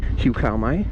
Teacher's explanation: Hiu, the rising tone. And cow with the falling tone.